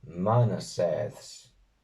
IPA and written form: 'ma.na.seːðs (MANASĒDS)